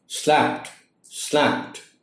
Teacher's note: the D sound is like a T sound at the end of the word. And it is pronounced as slapped, slapped.